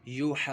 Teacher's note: الف کو باریک پڑھنا ہے کیونکہ الف سے پہلے باریک حرف ہے · مد لازم کا قاعدہ ہوگا 6 حرکات کی مقدار تک اس کو کھینچ کر پڑھنا ہے · واو مدہ ہو رہا ہے واو ساکن سے پہلے پیش، تو اس کو 1 الف 2 حرکات کی مقدار تک کھینچ کر پڑھا جائے گا